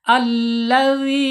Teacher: panjangnya dua harakat satu alif atau dua dua ketukan. Kemudian secara makhraj ya, karena ini huruf mad, ingat ya, setiap huruf mad berarti masuk aljaub. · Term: mad th'i